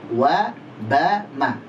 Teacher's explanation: Itu di dua bibir sekaligus. Yang dipakai bibir bawah dan bibir atas, dua bibir sekaligus.